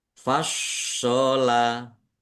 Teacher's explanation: shodnya ada tasdidnya dibaca dobel ditekan biar tampak dobelnya